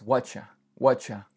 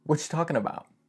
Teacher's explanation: what are you or what do you becomes whatcha